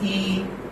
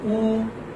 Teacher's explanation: when we pronounce E, then our lips are spread. They are not rounded. But when we say oo, okay, or O, then our lips are rounded.